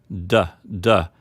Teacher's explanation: The letter D is voiced because your vocal cords are vibrating as you say it